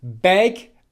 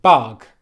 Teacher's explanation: /ɜ/ is right at the front of your mouth and /ʌ/ is at the back of your mouth